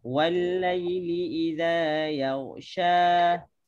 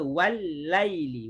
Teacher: Lam bertemu dengan lam. Walaili, lam bertemu dengan lam, jadi lam tu jadi satu lah. Dia masuk. Idgham ni maksudnya yang pertama masuk kepada yang kedua.